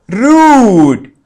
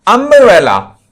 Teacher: In rude, the U is termed as a long vowel, and in umbrella, it is of shorter sound. That is why the sound have differentiated the both words in terms of short vowels and long vowels.